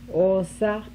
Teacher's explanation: Mid back, as in go.